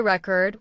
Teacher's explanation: If you say record with stress on the first syllable, it's a noun, like a music record. But if you say record with stress on the second syllable, it becomes a verb